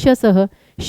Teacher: फिर आपका आता है शह। शलगम वाला तालव्य जीभ सीधी रहती है